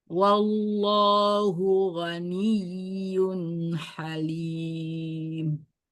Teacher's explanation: nun sukun ketemu dengan H itu izhar dibaca jelas, tidak didengungkan. Lim itu mat aril bisukun karena matobi'i bertemu dengan satu huruf yang disukunkan karena wakaf.